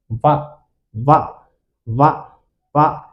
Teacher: అక్షరము వకారస్య చాలాసార్లు వచ్చింది బిట్టు వకారస్య దంతోష్ట్యం ఓష్టము దంతము మరియు ఓష్ట్యము దంతాలు మరియు ఈ పెదాలతో కలిపి పలుకుతాం దంతాలు మరియు పెదాలతో వ పెదాలు లు ఇంపార్టెంటే ఇక్కడ దంతాలు కూడా ఇంపార్టెంటే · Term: దంతోష్టియము